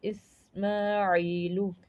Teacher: عی پہ یا مدہ ہو رہا ہے جسے ہمیں ایک الف کے برابر کھینچنا ہے ، یا مدہ کہتے ہیں یا ساکن سے پہلے زیر آ